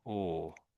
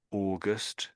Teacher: Although it's AU, we're really saying OR at the front here